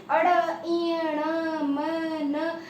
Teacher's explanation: तो ये सारे के सारे नाक से बोले जाते हैं। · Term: नाक वाले